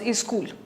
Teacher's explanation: it is very difficult for most Hindi speakers of the Eastern Belt to actually say school without bringing an E there. It always becomes a school.